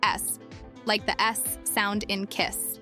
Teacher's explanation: The final S is pronounced as a voiceless alveolar sibilant, S, like the S sound in kiss.